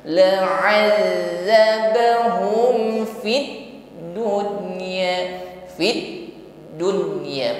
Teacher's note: di dalam mengucapkan huruf dal yang bertasydid justru harus tertahan karena sifatnya syiddah, inhibas jarayat shawt, tertahan aliran suara ketika mengucapkannya.